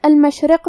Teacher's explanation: را کے نیچے زیر ہے تو را کا حکم ہے ترقیق. ہم حرف را کو پتلی آواز میں پڑھیں گے